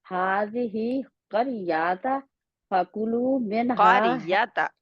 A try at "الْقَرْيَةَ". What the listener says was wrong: قریاتا نہیں ہے، یا کے آگے الف نہیں ہے۔